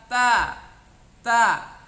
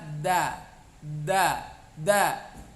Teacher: yaitu ujung lidah bertemu dengan gusi atas